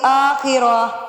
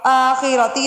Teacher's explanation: جب ہم ٹھہرتے ہیں، وقف مینز ٹھہرنا، تب یہ ہا کی آواز دیتی ہے